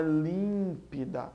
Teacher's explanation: Límpida é proparoxítona, a antepenúltima sílaba é a tônica.